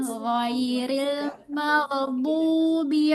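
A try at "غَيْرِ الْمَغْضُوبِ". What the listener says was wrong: Baik, tinggal di sini ada tadi qalqalah yang bukan qalqalah. Di mana itu ghain. Tadi Ibu baca ghairil maghdub. Nah, itu nggak boleh kalau qala di huruf ghain.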